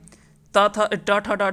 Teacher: ट ठ ड ढ जो है वो मूर्धन्य से होता है।